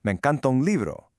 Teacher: When a word ends in a vowel and the next one starts with one, they just link up. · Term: connected speech